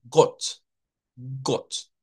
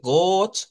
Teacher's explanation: es como la O nuestra, pero como que le rebanemos un pedacito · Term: O corta